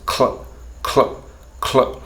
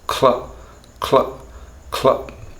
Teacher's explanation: What that means is that there's a very complex rolling, a transition between the k and the l, and that is that rolling motion that goes cl, cl, cl, is so complex that it's not actually easy to figure out what it is that we're doing.